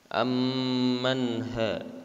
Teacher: Di sini termasuk dalam izhar, maka dibacanya harus jelas nun matinya. Ammanha, ya, tidak ditahan, ya.